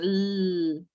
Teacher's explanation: Recuerdan que las primeras eran voiceless, que no tenían sonido, que no vibraba la garganta, pero estas sí. Cuando ustedes hacen la L solita, o la N, o la R, o la G, cualquiera de estas, nuestra garganta vibra. Por ejemplo, si dicen L, nuestra garganta tiene una vibración. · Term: voiced